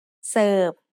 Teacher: Serve is said with a low tone because of the same tone rule we had earlier.